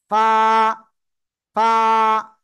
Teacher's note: নিচের ঠোঁটের পেট সামনের উপরের দুই দাঁতের আগার সাথে লাগিয়ে হালকা বাতাস বের করে এক আলিফ টানিয়া উচ্চারণ করে পড়বো